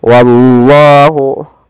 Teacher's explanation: Wallahu wa tipis, Allahnya tebal, lam tafhim.